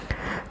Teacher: nunnya tidak terlalu dibaca dengan jelas tapi dia disamarkan kepada huruf selanjutnya maka di sini samarkan huruf ta kepada huruf Fa langsung maqsuratun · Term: ikhfa